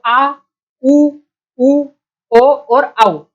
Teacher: जिह्वा का जो पीछे वाला भाग है वो इनके उच्चारण में हमको मदद करेगा। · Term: पश्च स्वर